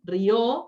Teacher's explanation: la tónica, la vocal encima de la que recae la acentuación es la O y no la I